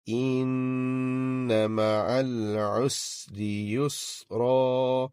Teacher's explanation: the noise, the sound of noon, gunna, it gets prolonged